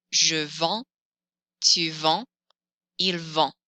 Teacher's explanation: I can't hear this final consonant, so I can't hear the letter D in vend